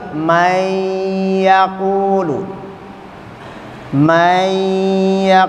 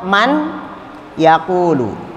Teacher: Kalau nun sakinah ketemu atau tanwin bertemu dengan salah satu dari 6 huruf ini, yarmuluna, berarti nun sakinah atau tanwin N-nya hilang, melebur ke dalam huruf tersebut. Maka yang terdengar kalau nun sakinah bertemu ya, nunnya hilang.